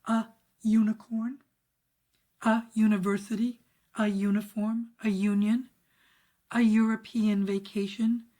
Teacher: a few words begin with a vowel, but we hear a y sound in front of it